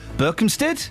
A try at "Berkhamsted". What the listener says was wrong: No, Berkhamsted. It's not got no P in it.